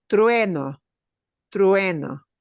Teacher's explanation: So your lips have to do an e. Go from an u to an e, a smile.